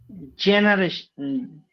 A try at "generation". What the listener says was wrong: No, not G, that is J. J.